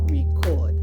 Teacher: The stress is on the second syllable, so it's a verb.